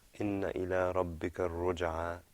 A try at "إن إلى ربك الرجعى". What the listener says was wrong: إن. Elongate that noon a little bit.